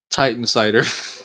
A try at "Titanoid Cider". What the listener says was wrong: There's an O right there. O's aren't silent.